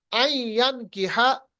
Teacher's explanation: अन के बजाय आई पढ़िएगा क्योंकि नून के बाद या आता है, नून साकिन के बाद इदगाम बगुन्ना, तजवीद का कायदा।